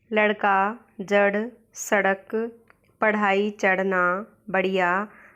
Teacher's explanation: अड़ और अढ़ दो ऐसी विकसित ध्वनियाँ हैं जो कि ट वर्ग के अंतर्गत आती है